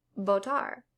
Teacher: B and V are going to sound the same, and they're both pronounced like B, as in botar.